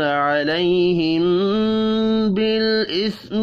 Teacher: میم ساکن کے بعد با ہے، اخفاء شفی ہوگا